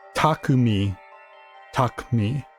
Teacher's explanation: It puts the U in parenthesis in the pronunciation guide because probably because that's like there's not supposed to be much like the U isn't like a pronounced U. It's more of like a just kind of extension of the K sound. So wouldn't that would be more like taki taki or taki like with a very just small u in there.